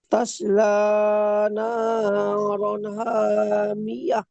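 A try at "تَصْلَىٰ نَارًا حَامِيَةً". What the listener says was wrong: মাশাআল্লাহ, খুব সুন্দর।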